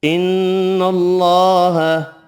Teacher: اللہ کا نام مارا لام نون والی زبر کی وجہ سے پر پڑھیں گے